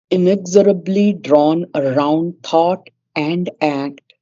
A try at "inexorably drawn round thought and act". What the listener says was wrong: it's not around. No, inexorably drawn round thought and act.